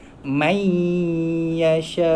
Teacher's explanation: Kemudian bila nun mati bertemu ya, kita masukkan bunyi nun tu man yasha kan, man yasha, bunyi nun tu masuk ke dalam huruf ya, daripada man jadi mai. Kemudian dengung dua harakat, mai yasha. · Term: idgham